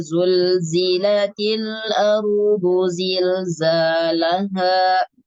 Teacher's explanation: sama Jadi huruf z punya sifat sirir ya kuatnya desisan desisan suara berdesis melewati celah antara gigi seri